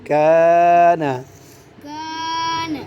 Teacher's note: کا میں ناک میں آواز نہ جائے آگے نون پہ جائے گی